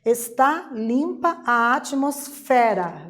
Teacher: o fé é a sílaba mais intensa da palavra atmosfera portanto a sílaba tônica é a sílaba mais forte